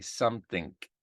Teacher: Ng, at the end of a word, it gets a K